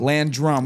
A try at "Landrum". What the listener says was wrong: You had that accent on the first part. Not the last part,